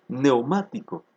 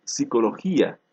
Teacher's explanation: euro igualmente ocurre con este grupo consonántico neumático no lo pronunciamos la primera consonante pierde su valor fonológico